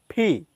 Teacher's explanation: দুই ঠোঁট একসাথে করে আমরা বলবো ফি